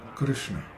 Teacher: when pronouncing the R-S-N in the middle of Krishna, the tongue is held back and pressed against the inside of the lower teeth